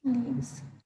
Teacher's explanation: S after vowels, S after vowels becomes Z sound, Leaves. like bee buzzing, not like zebra or zipper, but this is like bee buzzing sound.